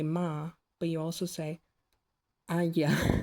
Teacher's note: with a palatalized M, the M itself happens with your lips. Your tongue is not involved.